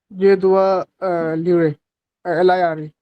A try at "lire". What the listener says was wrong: Don't say A at the end. Okay. Because there is no A. A is this. Remember, या फिर ER.